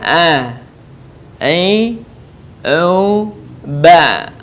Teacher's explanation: huruf a keluar dari tengah tenggorokan kita sama dengan cara kita melafalkan huruf ha